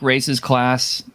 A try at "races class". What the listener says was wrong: Enunciate. It sounds like you're saying racist class.